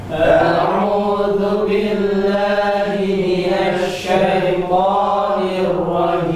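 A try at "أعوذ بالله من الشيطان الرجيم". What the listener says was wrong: Nah, ini salah satunya a'udzu, sempurnakan dzunya. A'udzu billahi minasy syaithanir rajim.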